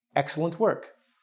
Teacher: so the first syllable is stressed